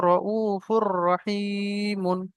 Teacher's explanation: তো তানবিনের পরে র আসার কারণে এই র- তানবিনকে আপনার রর সঙ্গে মিলিয়ে আমরা কি করব, বিনা গুণায় জাহির করে পড়ব।